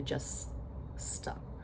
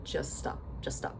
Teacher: when you have two consonants that are the same back to back, we just say it once. We don't say just stop.